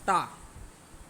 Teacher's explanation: जो जीभ है आपकी पीछे जा रही है, पीछे से फिर आगे आ रही है, मतलब आपका ये मूर्धा से होगा दोस्तों। इसको आप नोट डाउन कर लें, मूर्धा टा वर्ग।